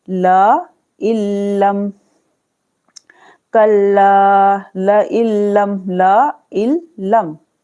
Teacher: नून की आवाज नहीं आएगी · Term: इदगाम बगैर गुन्ना